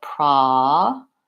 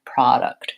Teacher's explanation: the first syllable is stressed, product, and it has a clear vowel, the ah vowel, product. I have to check the vowel myself.